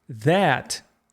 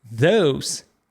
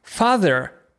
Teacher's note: замість с ми кажемо з і язик між зубами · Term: дзвінкий звук